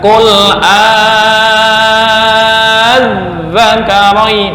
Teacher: Apa itu naber? Naber itu penekanan huruf. Penekanan huruf untuk membedakan dengan yang lain. Kul ditekan.